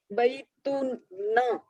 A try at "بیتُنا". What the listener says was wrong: بیتو نا، اور نا کو کھینچے ایک حرکت. بیتو نا، ایک الف کھینچے. نون الف ہے.